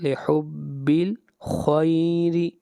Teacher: خا کو موٹا پڑھیں گے اور را کو باریک پڑھیں گے